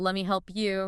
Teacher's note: you at the end of a phrase like that often reduces to yah